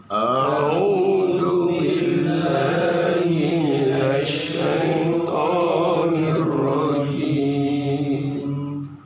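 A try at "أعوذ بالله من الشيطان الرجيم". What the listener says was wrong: Tasdid. Itu cara bacanya ditekan karena hurufnya itu hampir kayak double gitu ya, double. Di penekanannya itu di tawus itu di minas, jangan di hi-nya tekannya. A'udzu billahi, enggak, tapi di minasnya ya. A'udzu billahi minasy syaithanir rajim.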